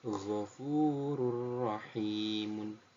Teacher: cara membacanya yakni masuk tapi tanpa mendengung